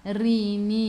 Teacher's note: Rimin, sebelum huruf akhir ada ya yang tak ada baris ma'rili sukun, boleh baca 2, 4 atau 6 harakat. Matikan dengan huruf nun, hujung lidah menyentuh gusi atas